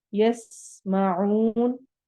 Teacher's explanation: سین میں سیٹی والی آواز ہے